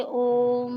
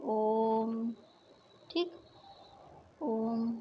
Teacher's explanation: त्रिमात्रिक स्वर जैसे ओम है, ये प्लुप्त स्वर के अंतर्गत आते हैं